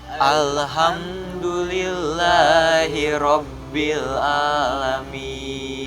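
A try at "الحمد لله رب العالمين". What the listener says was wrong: Hati-hati, yang terakhir itu bukan alamin tetapi ain ya. Jadi bukan alamin tetapi alamin ya. Alhamdulillahi rabbil alamin.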